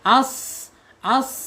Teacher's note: sad ini mempunyai sifat alhams karena udaranya masih keluar ketika di diucapkan.